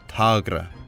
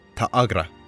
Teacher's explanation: we end up with what sounds like a slight catch in the throat